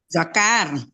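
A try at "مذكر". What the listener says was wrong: Jangan zakar aja nih, mudzakkar gitu. Iya, makanya nggak kedengaran mu-nya tadi tuh.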